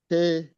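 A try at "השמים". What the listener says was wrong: c'est une lettre silencieuse. Il faut prononcer que la voyelle.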